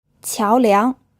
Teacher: This word is pronounced with 2 second tones.